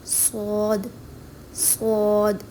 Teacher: زبان کا سرا جب نیچے والے دانتوں کی اندرونی سطح سے ٹکراتا ہے تو صاد ادا ہوتا ہے اور اس صورتحال میں اوپر نیچے والے دونوں دانت آپس میں ملتے ہیں.